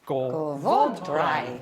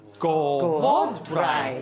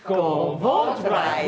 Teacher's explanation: accent falls on the last but one syllable, usually